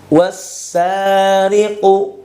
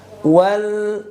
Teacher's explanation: Alif lamnya ini ketika setelahnya berhadapan dengan huruf bertanda tasydid maka lamnya dilebur ya diidgamkan dimasukkan langsung ke huruf yang bertanda tasydid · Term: idgam Syamsi